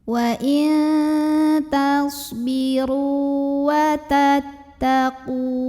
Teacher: ra yang berbaris dhammah kita panjangkan 2 harokat saja. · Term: mad tabi'i